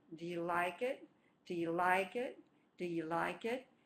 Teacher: the first beat is on like, which means the first 2 words are not stressed. So do you becomes do you.